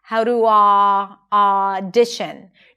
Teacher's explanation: You can hear the beautiful connected speech and then also the open ah sound.